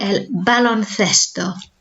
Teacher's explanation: remember our soft th sound, like in the number 5, cinco.